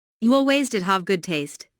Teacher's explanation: Notice the stress on did